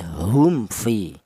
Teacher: mem mati ini keluarnya huruf berasal dari bibir, itu artinya syafawi. Saya ulang, hum fi dibaca idhar syafawi, alasannya ada mem mati berjumpa dengan huruf fa, yaitu idhar itu dibaca jelas, yang dibaca jelas adalah huruf memnya ini.